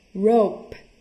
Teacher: Đứng tận cùng thì phải bật hơi.